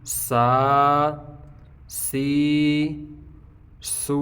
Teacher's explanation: سین باریک پڑھیں گے، اس کی ساؤنڈ باریک ہوگی لیکن سی ٹی کی آواز آئے گی سین سین کھڑا زبر سا سین کھڑی زیر سی سین الٹا پیش سو سا سی سو.